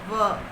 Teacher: दंतोष्ठ्य, जिनका उच्चारण निचले होठों से दांतों के मिलने से होता है।